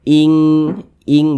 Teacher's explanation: cara membunyikannya itu disamarkan kemudian juga didengungkan akan tetapi dia kadar ikhfanya itu dia rendah kadar ikhfanya itu · kadar samarnya itu dia rendah lebih tinggi daripada kadar dengungnya sehingganya dia lebih condong berbunyi Eng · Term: ikhfa Hakiki ab'ad